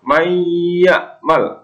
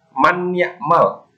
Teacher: Nun mati ketemu ya, maka dibaca mendengung. Mayyamal, tidak boleh man ya'mal, harus mendengung. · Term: idgham bi gunnah